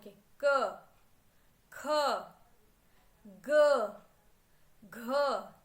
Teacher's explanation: सारी वाइब्रेशन कहां से हो रही है आपके वोकल से कंठ से जिसे हम हिंदी में कहते हैं ना कंठ गला नील कंठ